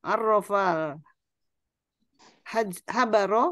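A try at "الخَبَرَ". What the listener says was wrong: Ini khobaro seharusnya. Ya, seharusnya kurang titik.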